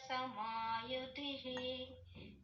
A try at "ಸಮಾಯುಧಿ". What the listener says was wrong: ಸಮಯುಧಿಹಿ ಅಲ್ಲ ಅದು ಯುಧಿ ಅಷ್ಟೇ